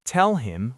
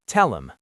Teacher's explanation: The H is gone, and we link the L. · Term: elision